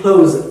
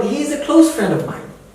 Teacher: So it has two sound patterns actually, pronunciation patterns. When it is verb, it is close, the za sound. Okay? And when it is adjective or adverb or noun, that becomes sa sound.